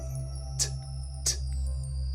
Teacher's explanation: It's voiceless, right? There's no buzz to that sound.